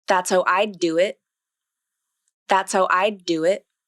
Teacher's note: So to make this link, you'll bring the tongue tip up to the alveolar ridge for the final D in I'd, then keep it there, don't release it, and transition directly into the D in do. So the tongue tip comes up once for the D in I'd, then the tongue tip comes down as you say the D in do.